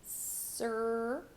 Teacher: you're going to go from an S sound straight to the American R sound